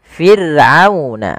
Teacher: ada huruf ra yang didahului dengan huruf kasrah, maka ra-nya tipis, tidak boleh dibaca tidak, tapi fir'auna, ra-nya tipis, kita namakan dengan ra tarqiq.